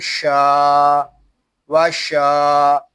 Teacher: واو زبر وا شین الف زبر شا وشا، شین کو ہم ایک الف تک کھینچ کر پڑھیں گے کیونکہ یہاں الف مدہ ہو رہا ہے. شین یہ زبان اور تالو کے درمیان والے حصے سے ادا ہوتا ہے. جب ہم شین کو ادا کریں گے تو آواز منہ میں پھیل جائے گی.